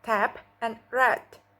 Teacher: Oral passage is blocked by pressing the tongue tip against the alveolar ridge.